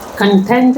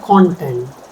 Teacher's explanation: content stress on the second syllable and content stress on the first syllable different meanings